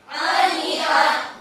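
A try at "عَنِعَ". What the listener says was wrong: Jangan ani'a. Jangan ke dalam hidung ya. Tetap di tenggorokan ke tengah.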